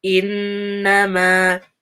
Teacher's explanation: So we have a noon with shadda, so give it time, and gunna. And then innama is 4 counts.